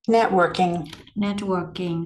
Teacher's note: Networking thì mình lưu ý là nhấn ngay chỗ vần 1